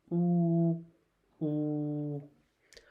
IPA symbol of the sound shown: u